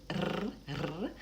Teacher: my tongue is going up rapidly and touching behind my teeth. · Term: front R